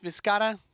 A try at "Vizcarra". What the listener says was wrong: You were rolling your R's better in the...